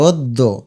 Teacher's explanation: মত উচ্চারণ হয় এটাকে বলে সংবৃত তার মানে অকে ও দিবে এবং দফলাকে দুইবার উচ্চারণ করবে